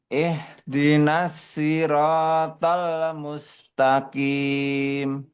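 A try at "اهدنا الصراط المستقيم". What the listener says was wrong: Ihdinas siratal mustaqim. Ketika dibaca itu jangan dilepas. Kalau dilepas jadinya ih, ih, ih. Enggak. Jadi diikat. Diikat hak itu yang sukun dengan harokat yang kasroh. Jadinya agak tipis. Ihdi.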